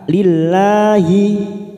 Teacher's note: Alhamdulillahil, masuk pada lam jalalah kita baca tarkik tipis karena sebelumnya berharokat kasroh li, maka lillahi.